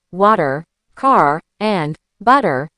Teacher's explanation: In the US and most of Canada, we use what's called a rhotic R. We really lean into it. Words like water, car, and butter have a very strong R at the end. · Words like water, car, and butter have a very strong R at the end. However, if you're in London, that R often disappears or turns into a soft sound.